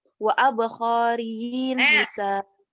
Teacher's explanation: Abqariyyin, kofnya pendek. Abqariyyin hisan, sa-nya yang panjang.